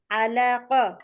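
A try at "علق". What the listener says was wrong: আপু আলা টান হবে না, আলাক।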